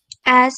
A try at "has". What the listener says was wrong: Recuerden que la H no es muda en inglés. Has.